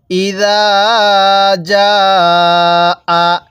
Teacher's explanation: এই জালটা আমরা নরম করে উচ্চারণ করব আর জিমটা শক্তভাবে উচ্চারণ করব।